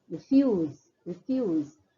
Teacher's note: the stress is more on the second syllable